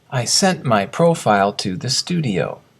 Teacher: The T of sent reduces to almost nothing.